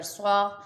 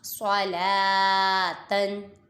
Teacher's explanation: اور جو صاد ہے اسے پر پڑھیں گے، حروف مستعلیہ میں سے ہے